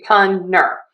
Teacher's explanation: puner with an n. You kind of drop that t.